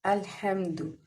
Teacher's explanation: اور اس کے بعد ہے لام۔ لام جو ہے وہ اس کو ہم باریک پڑھیں گے